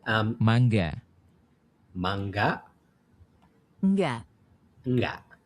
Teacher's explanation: Okay, so it's like a very nasal NG.